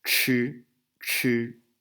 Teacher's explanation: we have a little raised H so we have aspiration here